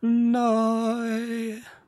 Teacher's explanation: she doesn't actually say the T. She doesn't pronounce it. She doesn't close out her syllables correctly.